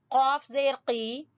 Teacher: قاف زبان کی جڑ سے ادا ہوگا